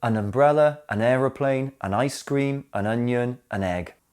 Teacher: Notice the stress is on the noun, not the article.